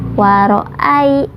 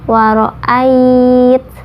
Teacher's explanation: Kalau huruf lin itu membacanya waro'ai ya, membacanya itu lunak aja. Kalau madlin itu panjang. Nah, kalau madlin itu kita berhenti waro'ait.